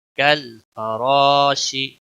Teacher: را موٹا پڑا جائے گا اور مد بھی ہوگی ایک الف کے برابر، اس کو کھینچنا ہوگا